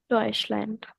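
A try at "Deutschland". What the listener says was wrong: ए नहीं है, आय,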